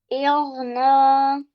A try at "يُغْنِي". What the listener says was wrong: No, noon has a kasra.